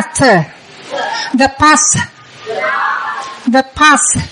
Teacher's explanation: cái răng trên đụng cái lưỡi đó thả ra